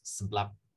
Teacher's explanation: A very common presyllable is just an S with a sort of indistinct schwa in between the S and the major syllable